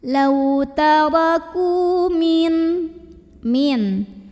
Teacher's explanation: Cara membacanya dipanjangkan kafnya ini 2 harokat saja. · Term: mad tabi'i